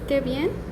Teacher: con una voz alegre eh se eleva el tono al final de la frase y se habla con más energía